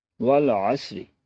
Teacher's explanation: دوسرا، اس میں را ایک ایسا حرف آیا جس کے نیچے زیر ہے، تو اس حوالے سے یہ بات بھی ہم سمجھ لیں کہ را کے نیچے زیر ہو تو اس کی آواز باریک ہو جاتی، تھن ساؤنڈ آتی ہے